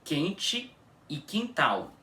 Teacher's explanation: O dígrafo QU no português pode ter um som de K quando seguido da vogal E ou I, como por exemplo, quente e quintal. Bom, vocês podem até reparar que nessas palavras o U não é pronunciado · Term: o U fica mudo